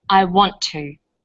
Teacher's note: the final T sound in want is held slightly longer on the tongue then to is pronounced the T sound is pronounced only once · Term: consonant plus same consonant linking